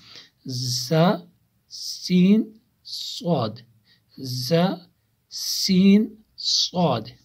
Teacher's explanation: ثنائے سفلا جو ثنایا ہے بالکل سامنے کے چار دانت، اوپر والے دو کو ثنائے علیہ اور نیچے والے دو کو ثنائے سفلا کہتے ہیں، تو زبان کی نوک ان ثنائے سفلا کے ساتھ ٹچ ہو جاتی ہیں اور کچھ اتصال ثنائے علیہ سے بعد میں پھر جب ہم رکتے ہیں تو کچھ تھوڑا سا اوپر والے سامنے کے دو دانتوں کے ساتھ بھی ٹچ ہوتا ہے۔